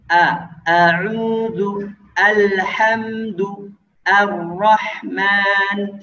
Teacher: makhraj hamzah, ya, yang keluar dari pangkal tenggorokan